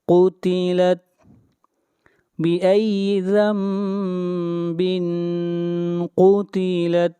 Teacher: یہاں پر نون کی بجائے میم کو پڑھیں گے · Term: اقلاب